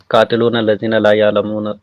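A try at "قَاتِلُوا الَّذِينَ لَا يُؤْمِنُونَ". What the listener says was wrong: कातिलूना नहीं है भाई, कातिलुल लदीना है जी।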